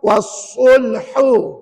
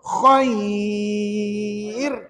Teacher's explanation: kerongkong itu H pedas Cuba sebut wasulhu wasulhu ha hu tu Tengah kerongkong tapi selepasnya ada Kha kan Kha bunyi atas kerongkong Cuba sebut Khair Khair kan beza tu Tengah dengan atas Cuba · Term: makhraj huruf Kha